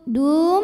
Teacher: Du mad tabi'i zahiri, karena waw sukun didahului baris dhammah. Cara membunyikannya dipanjangkan dalnya 2 harokat